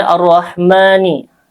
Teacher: ro-nya dibaca tafkhim tebal karena berharokat fathah